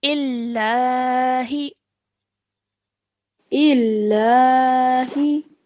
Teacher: we're not stretching the E sound out for too long. Straight away joining to the lam mushaddad